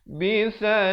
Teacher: Bisalasati, sa di hujung lidah.